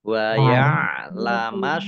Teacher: alif lam samsiah karena tidak dibaca, langsung masuk ke huruf berikutnya yaitu shot